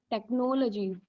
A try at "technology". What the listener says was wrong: Right, technology. So don't have that break in between. Like don't say technology. Technology.